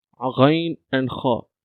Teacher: These letters were pronounced from the top part of the throat.